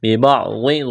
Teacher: ضاد کو موٹا کرنا ہے، مد ہے کھینچنا ہے